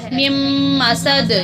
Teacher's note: نون کے اوپر جزم ہے اس کو نہیں پڑھیں گے کیونکہ اگلے میم پر شد ہے۔ میم مسد، یہاں دال پر بھی قلقلہ ہوگا۔